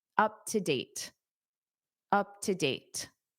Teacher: Up to date. Now here, because date ends the sentence and you naturally take a pause anyway, you can pronounce that T